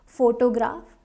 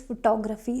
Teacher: but in this word it is photography second syllable is stressed